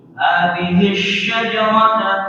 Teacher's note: Shinnya kurang tafashi ya, sifatnya itu menyembur.